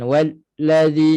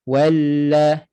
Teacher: Lam sabdu suara mengalir sedikit. Jangan walladzi, jangan terputus suara pada lam ni. Walladzi itu terputus. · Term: sifat tawassut